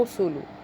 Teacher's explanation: एक पिछले वाले काफ से बनेगा कर, तिल कर, उसके बाद और रसूलु, रा को मोटा पढ़ेंगे क्यों रा के ऊपर पेश है